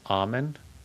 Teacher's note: You're not supposed to say the L.